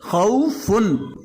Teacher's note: تو نون کی آواز آ رہی ہے، یہاں پر ہمیں نون کو ظاہر کرنا ہے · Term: اظہار